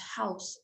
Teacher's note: the position of the tongue at the start of the vowel had moved over the center of the mouth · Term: more centralized